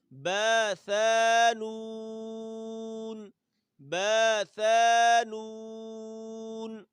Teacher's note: با ثا 1 الف کے برابر اور نون 3 الف کے برابر کھینچنا ہے